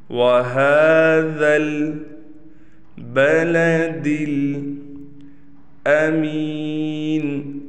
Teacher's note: یہاں پر ہا پر کڑا زبر ہے، لہٰذا اس ہا کو ایک الف کے برابر کھینچیں گے۔